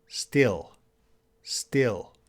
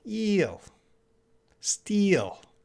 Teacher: Still, very short I sound. Still, still. And eel, it's a longer E.